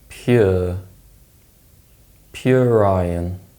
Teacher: this case the ER sound is inserted for example pure Ryan this is known as the linking R and it's a way of linking words together in Connected speech